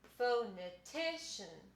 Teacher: ti is the most important syllable and fo is the second most important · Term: primary stress